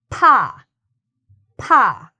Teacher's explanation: there's a bit of a pop sound with that. You have air coming out when you say pa. In fact, if you hold a Kleenex in front of your lips and you go pa, the air can actually blow the Kleenex up because it's a strong puff of air. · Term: lip sound